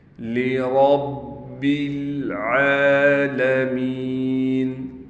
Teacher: را کو موٹا کر کے پڑھیں گے، را کو با کے ساتھ ملائیں گے کیونکہ با پر تشدید ہے